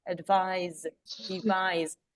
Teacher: I. I is a strong syllable and it gives you the Z sound. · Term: Word stress